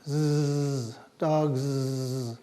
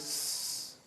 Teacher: If you stick your fingers up here, you can feel your vocal cords vibrating. If you stick a piece of paper in front of your mouth, you'll see it vibrate. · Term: Z sound